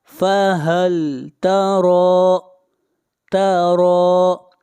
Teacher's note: را کو کھینچ کر پڑھیں گے الف کے برابر، اور را کو یہاں پر موٹا پڑھا جائے گا